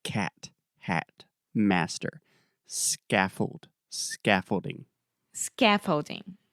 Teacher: that first vowel sound is the ah, very open ah